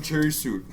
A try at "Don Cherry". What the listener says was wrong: Cherry, not Sherry.